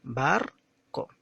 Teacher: tiene 2 sílabas y que justamente la primera ha sido pronunciada con mayor tonalidad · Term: sílaba tónica